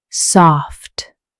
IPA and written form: sɔːft (Soft)